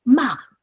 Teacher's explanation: 51 represents the fourth tone. It starts from the highest and uh go down very quickly.